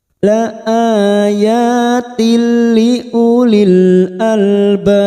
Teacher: idgham bila gunah hanya masuk tanpa mendengung la ayatil liulil Albab liulil masuk pada Idhar qamariyah lam takrif · kasro tain yang bertemu lam, idgham bila guna, hanya masuk tanpa mendengung